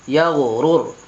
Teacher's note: تو یہاں را پور ہوگی. کیونکہ رائے ساکنہ سے پہلے پیش آ رہا ہے، اس لیے یہاں را پور کر کے پڑھیں گے.